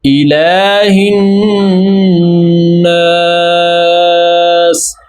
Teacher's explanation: لام پر کھڑا زبر ہے, ایک الف کی مقدار کے برابر ہم اس کو لمبا کریں گے کیونکہ الف مدہ کے قائم مقام ہے.